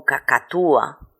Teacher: no lo pronuncio como si fuera un diptongo lo pronuncio como dos sílabas diferentes como un iato